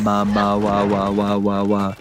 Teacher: The sound of W is like your lips are just teasing each other. They're not totally touching.